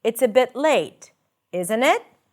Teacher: When you use rising intonation in the second part, the tag, it usually suggests that you are uncertain